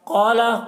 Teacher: قاف حروف مستعلیہ میں سے ہے، قاف کو پر پڑھیں گے